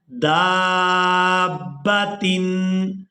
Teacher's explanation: دال کو الف مدہ اور مد کی وجہ سے کھینچتے ہوئے با مشدد کے ساتھ ملانا ہے